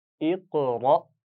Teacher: را کو موٹا پڑھنا ہے، یہاں پر زبر ہے اس پر خیال رکھیے اور اس کے بعد حمزہ ساکن ہے تو جھٹکا ہوگا